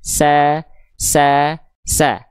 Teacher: mulut terbuka ya pangkal lidah enggak naik Sehingga yang keluar ketika fathah vokal a karena tipis sa sa sa buka mulutnya sedikit senyum sa sa sa Sekarang